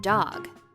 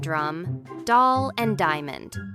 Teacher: D is a voiced sound, made by the tongue tapping the top of the mouth quick and clear